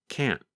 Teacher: Another reason we might choose to say cannot when speaking on the phone is because there is only a small difference in pronunciation between the positive form can and the negative form, can't. Sometimes you can hear the letter T when we say can't, but other times it is harder to hear